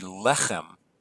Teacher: This should be accented on the first syllable